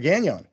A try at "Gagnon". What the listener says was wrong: And you've given a sort of French pronunciation to the name, which is okay. Gagnon. is the way it should be pronounced, but we've bowed to the English-speaking world and we say Gagnon.